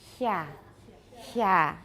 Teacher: a voiceless palatal fricative